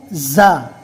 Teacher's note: زا کو ادا کرتے وقت سٹی جیسی آواز نکلے گی